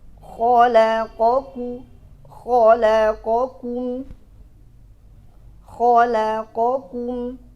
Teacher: Kita pastikan kho keluarnya di ujung tenggorokan, la di ujung lidah, o balik lagi ke ujung ke pangkal lidah, ku ke pangkal lidah di ujung, lalu mim di ujung bibir. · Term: makhrajnya